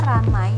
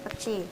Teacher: Perubahan ini terjadi pada bunyi vokal rangkap AI ke vokal tunggal E. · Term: Monoftonisasi